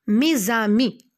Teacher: La liaison, c'est un procédé consistant à prononcer la consonne finale d'un mot lorsque celui-ci est suivi d'un mot commençant par une voyelle ou un H muet. Mes amis, le son Z que vous entendez, c'est une liaison.